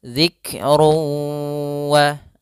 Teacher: Maka cara membacanya, masukkan dulu tanwinnya ke waw, kemudian ditahan. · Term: idgham bi gunnah